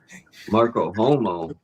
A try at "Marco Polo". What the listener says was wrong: When you say it, it sounds like Marco Homo. Can you say Marco Polo again?